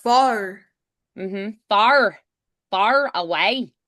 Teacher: to do a harsher R, like almost like an American R in Irish